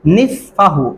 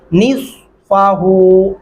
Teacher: स्वाद पढ़ते हुए आपके होंठ गोल शक्ल में हो रहे हैं